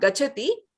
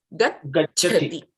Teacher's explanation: You have to wait, pronounce the ch, and then go to the mahaprana cha.